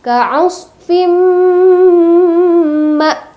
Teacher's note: Nah, ada huruf mim, kemudian sebelumnya ada tanwin, itu disebut dengan idgham bi gunnah. Idgham bi gunnah, tanwin bertemu dengan huruf mim, maka dibaca dengung.